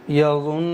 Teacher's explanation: ایک الف کے برابر غنہ کر کے پڑھیں گے